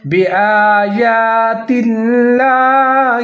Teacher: حمزہ کے اوپر کھڑا زبر ہے، آگے جا کے اوپر بھی کھڑا زبر ہے، تو دونوں کو ایک الف کے برابر لمبا کر کے پڑھیں